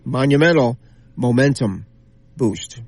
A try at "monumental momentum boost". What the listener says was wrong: No, but you said moose first, which I thought was understandable because you get into a tongue twister there.